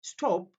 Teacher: that P is not aspirated here